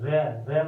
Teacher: जब रे बोलोगे अपनी जीभ गोल घूम जाती है, इसीलिए इसको लुंठित कहते हैं